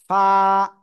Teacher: নিচের ঠোঁটের পেট, উপরের দুই দাঁতের আগায় লাগাবেন, লাগিয়ে উচ্চারণ করতে হবে